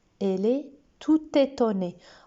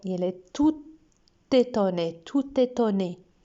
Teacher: même si tout s'écrit avec un T, qu'il est au masculin, on fait la liaison